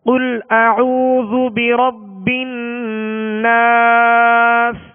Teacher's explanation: آخر میں سین کی آواز کو واضح کرنا ہے اور اس کی آواز سیٹی کی آواز مزید زیادہ تکلف میں بھی نہ ہو، جیسے ناس اس طرح بھی نہیں پڑھنا، بلکہ سین کی جو سختی ہے، جو سیٹی کی آواز ہے، وہ واضح محسوس ہو اور ساکن کر دینا ہے سین کو